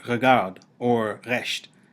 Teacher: you might think of the pronunciation of resh like that of the letter r in French or German, as in regarde or Recht, which is pronounced at the back of the mouth around the uvula